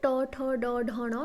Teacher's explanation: हमारा जो टंग है वो जाके वो दंत टिथ का थोड़ा सा पीछे वाला हिस्सा को टच करता है, तो ये हो गया हमारा मूर्धन्य।